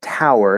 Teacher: for the diphthong in tower so we have the au diphthong i gravitate toward using the ash vowel for the first part of the diphthong